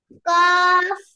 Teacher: জিব্বার গোড়া তার বরাবর উপরে তালুর সঙ্গে লাগিয়ে